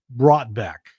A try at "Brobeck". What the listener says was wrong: It's Brobeck. The T is silent.